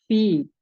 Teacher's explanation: ujung gigi seri bagian atas, kemudian menempel di bibir bawah bagian basah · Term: huruf fa